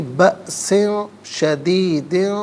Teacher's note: بأسن میں حمزہ ساکن ہے تو اسے جھٹکے کے ساتھ پڑھیں گے